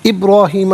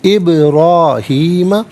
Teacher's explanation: ابراہیم میں با ساکن ہے لیکن حرف قلقلہ ہے تو آواز لوٹتی بھی محسوس ہوگی